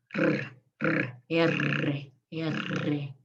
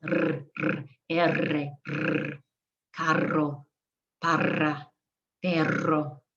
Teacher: So my tongue is vibrating. I'm blowing over it. I'm holding it loosely on the ridges and making it vibrate.